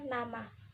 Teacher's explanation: bunyi yang dihasilkan oleh keterlibatan ujung lidah dan gusi atau alveolum atas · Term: bunyi apikoalveolar